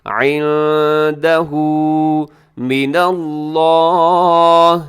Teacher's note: لفظ اللہ سے پہلے نون کے اوپر زبر، لفظ اللہ موٹا پڑھیے گا